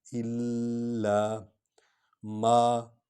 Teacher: الا، لام پر شد ہے، اس لیے اس کو بڑھا کر پڑھیں گے، وہ الف اور لام کو اکٹھے پڑھیں گے کیونکہ اس پر شد ہے۔ الا ما، میم حرف شفوی ہے، یہ ہونٹوں سے ادا ہوگا